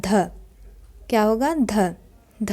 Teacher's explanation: ध जो है दंत वर्ण भी है महाप्राण भी है और घोष भी है